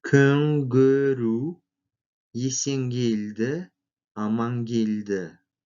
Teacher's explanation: Сочетание звуков «н-к» произносится как «нг».